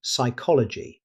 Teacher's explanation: Although the word begins with P, the P is completely silent. Native speakers say psychology.